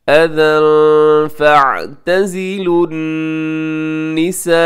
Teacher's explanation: तनवीन है और तनवीन के बाद फ़ा है तो यहाँ इख्फ़ा कीजिएगा और यहाँ वक़फ़ ना कीजिएगा क्योंकि आगे लाम अलिफ ला लिखा हुआ है।